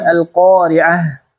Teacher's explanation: ingat Ta marbutah di akhir harus terdengar bunyi h-nya